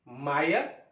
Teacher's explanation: आई म्हटलं की ओठाला ओठ भिडतात